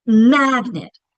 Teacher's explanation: We're stretching. We're saying that first syllable longer with more emphasis. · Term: accented syllable